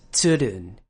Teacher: this name begins with a TS sound at the beginning of the word